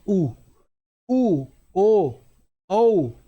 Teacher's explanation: ये जैसे आप स्वर बोलो उ ओ औ ये सारे आप कैसे बोलेंगे? होठ को गोल करके बोलेंगे। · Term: वृत्ताकार स्वर